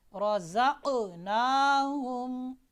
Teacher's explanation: یہ قاف موٹا بھی ہے اس میں قلقلہ بھی ہوگا. · قاف جب یہ ساکن ہو تو آپ نے اس میں قلقلہ کرنا ہے.